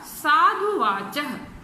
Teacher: तो यहाँ हमने देखा कि दो जो ह्रस्व ऊ है वो मिलकर दीर्घ ऊ हो गए